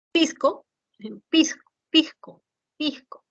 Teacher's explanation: aspiración de S como una J suave